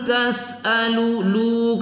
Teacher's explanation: nun sukun bertemu ta kita baca ikhfa Hakiki kita gunahkan kita dengungkan membacanya